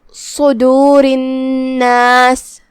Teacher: کلمت صدور میں یہاں حرف الصاد ہے، صاد حروف التفخیم میں سے ہے، ہم اسے منہ پھلا کے بھاری آواز میں ادا کریں گے